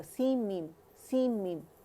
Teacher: complete merging होगी मीम के अंदर, तो मीम अदा होगा